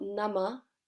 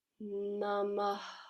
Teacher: So it's not nama, it's namah. Exhalation of air.